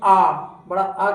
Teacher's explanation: विवृत जिसमें मुख पूरा खुला होता है। लगभग आ बड़ा आ करेंगे जब तो पूरा मुख खुला रहेगा।